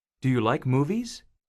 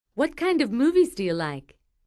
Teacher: yes no questions usually have Rising intonation wh questions usually have falling intonation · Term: question intonation